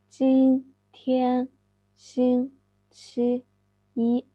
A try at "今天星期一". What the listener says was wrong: Excellent. Good.